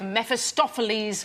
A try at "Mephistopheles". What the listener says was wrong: Did you say Mephistopheles? Mephistopheles. I think you said meth.